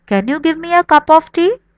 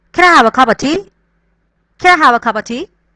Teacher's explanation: They are shortening things out. Cup of becomes cuppa.